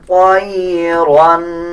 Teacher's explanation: طا کو پر یعنی موٹا پڑھا جائے گا، را کو بھی پر پڑھا جائے گا